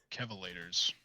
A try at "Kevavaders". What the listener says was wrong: No, because that's like an escalator. Kevavaders.